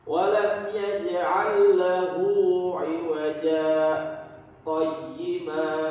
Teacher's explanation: Jadi lagi pengertian pengertian sakta, berhenti sejenak, sekedar satu alif tanpa bernafas